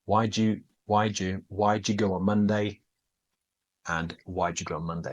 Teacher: They do sound identical, but you need to be careful with this. Did you becomes j, do you becomes j, the same.